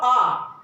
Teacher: और आ, डॉक्टर जब हम डॉक्टर को दिखाने जाते हैं तो डॉक्टर बोलता है बोलो आ, हमारा मुंह पूरा खुल जाता है, इसीलिए आ बुलवाता है। तो जो ये आ स्वर है वो विवृत है।